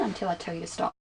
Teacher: the falling tone at the end tells the listener that the statement is finished